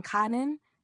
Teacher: 비용을 의미하는 카는 내림 소리, falling tone입니다.